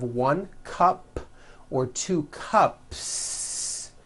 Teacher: There's no voicing at the end of that word. The S remains unvoiced.